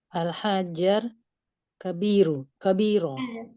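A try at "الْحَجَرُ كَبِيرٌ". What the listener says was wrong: Ya, kabirun. Jangan lupa diperjelas tashkil huruf terakhir karena pada saat belajar bahasa Arab sebaiknya kita itu karena ini sangat penting. Al-hajaru kabirun.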